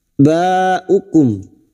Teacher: sini yang bertemu dengan Hamzah dalam satu kalimat mad wajib muttasil mad wajib muttasil lima harakat kita panjangkan baukum lima harakat kita panjangkan dan kita wakaf pada tanda Q